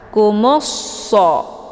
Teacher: mimnya dileburkan ke dalam huruf shad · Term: idgham syamsiyah